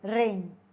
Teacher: Place of articulation. The tip of the tongue is raised towards the area just behind the alveolar ridge. Okay, that's you can feel that area with your tongue. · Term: post-alveolar